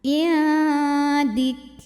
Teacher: Jangan lupa untuk mengeluarkan sifat hamas yang sering tertinggal pada huruf kaf ya. Jadi kalau kafnya sukun, hamsnya atau suara anginnya itu belakangan.